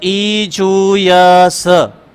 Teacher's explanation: इ इ च वर्ग य और स ये तालू से बोले जाते हैं